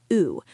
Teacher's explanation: Like flute. Your lips should be relaxed, not rounded like English.